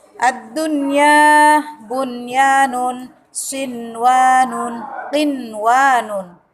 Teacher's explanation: Jadi kalau kalian menemukan lafaz ad-dunya itu tidak boleh dibaca dengung, tapi dibaca izhar, namanya izhar wajib.